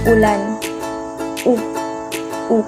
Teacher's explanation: Ito ay mataas na palikod. Mataas at nasa likod ang dila at mas pabilog ang labi tulad ng salitang ulan.